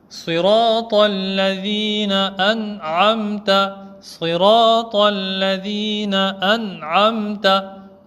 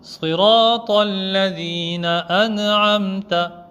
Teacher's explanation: Siratal ladhina an'amta, siratal ladhina an'amta, et non siratal ladhina an'amta. On ne doit pas entendre de qalqala sur le noun. Donc ça c'était la règle de izhar.